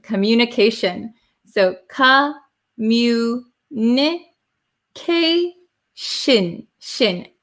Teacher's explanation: T I O N at the end of a word becomes shin.